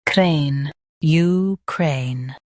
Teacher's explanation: Stress cray and end with a clear N.